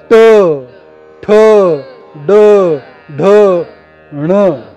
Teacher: मूर्धन्य उच्चार होतो कोणता ट [संगीत] ठण हे मूर्धन्य उच्चार आहेत ह्या उच्चाराच्या निर्मितीचं स्थान मूर्धा जीभ तिथं टेकलेली असते आणि मग पुढे टाकली जाते